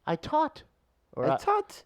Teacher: in the Irish one, you lose the H.